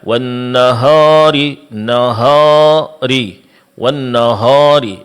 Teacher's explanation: Menebalkan bunyi alif mad di tempat yang di situ dia semestinya tipis. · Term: ditebalkan